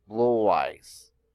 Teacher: when one word ends with a vowel sound and the next word begins with a vowel, a W is added to link the word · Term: double link